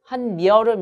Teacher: 그런데 앞에 접사에 니은으로 끝났고 뒤에 여로 시작하는 말이 이어졌단 말이에요. 이 경우에는 니은 첨가가 일어나서 한여름 이렇게 발음되는 것을 볼 수가 있고요